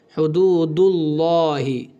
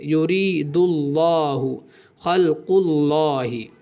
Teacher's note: زبر یا پیش دونوں حالتوں میں لفظ اللہ کے لام کو موٹا پڑھیں گے۔